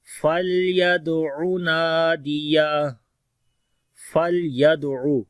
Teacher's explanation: لام کے اوپر توسط ہوگا، دال کے اوپر کلکلہ ہوگا